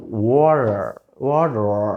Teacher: వాటర్, వాటర్, రా వెనక్కి వెళ్తుంది, రా రిట్రోఫ్లెక్స్, వాటర్ పలుకుతుంది. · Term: రిట్రోఫ్లెక్స్ రా